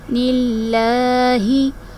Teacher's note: ہم نے لفظ اللہ کے لام کو باریکی سے ادا کیا اس لیے کہ اس سے پہلے جو متحرک حرف آ رہا ہے اس کے نیچے زیر ہے، تو اس صورت میں ہم اسلام کو باریک پڑھیں گے۔